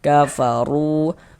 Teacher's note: Huruf ro memiliki harakat dommah ini ya. Sehingganya huruf ro kita baca tebal, kita baca tafkhim. Kafaru. Kemudian ru dibaca panjang.